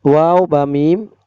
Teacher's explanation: 15 number মাখরাজ 2 ঠোঁট হইতে ওয়াও বা মিম উচ্চারিত হয়